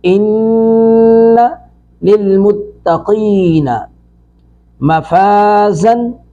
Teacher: نون مشدد پہ غنہ کریں گے